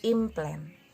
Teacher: Dan contoh lainnya yaitu NP dalam kalimat implant diucapkan menjadi implant. NP-nya diucapkan menjadi m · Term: assimilation